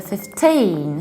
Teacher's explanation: I live at number 15, so we stress the second syllable